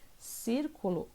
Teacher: círculo a sílaba tônica é o se e ela é a antepenúltima sílaba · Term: proparoxítona